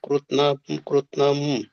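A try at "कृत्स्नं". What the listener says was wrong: ಕೃತ್ಸ್ನಂ. ಪ್ರಭುಜಿ ಸ ತಕ್ಕೆ ಸ ಒತ್ತಿದೆ. ಕೃತ್ಸ್ನಂ. ಕೃತ ಸ ಕೃತ್ಸ್ನಂ.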